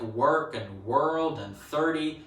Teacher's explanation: Southland, for some reason, probably because of how many rhotic people were there to begin with, has preserved the rhoticity that all of the rest of New Zealand has since lost. Nowadays, it's mainly in the nurse vowel.